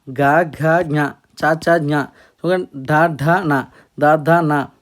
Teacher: ఈ వర్ణాలను మనం ప్రొనౌన్సియేషన్ చేసినప్పుడు అవి కంపించాయి అనుకోండి, వాటిని మనం ఏమంటామంటే ఘోష్ వర్ణ అని అంటాం